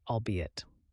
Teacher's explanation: for albeit we stress the middle syllable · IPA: /ɔːlˈbiː.ɪt/